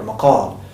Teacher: It would remain as the qaf it is. It doesn't, you wouldn't pronounce it with a glottal stop like the hamza or g.